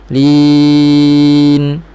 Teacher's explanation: matikan nun baru naik sedikit ke hidung secara semula jadi gunnah asliyah, gunnah naqisah, gunnah yang kurang sempurna. Ada dengung tetapi bukan dengung yang sempurna.